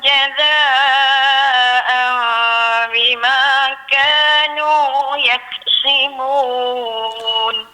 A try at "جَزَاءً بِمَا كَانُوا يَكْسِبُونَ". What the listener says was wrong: Jaza, mak wajib tu kena bagi cukup 6. Tadi macam kurang, dia macam tak berapa cukup tadi.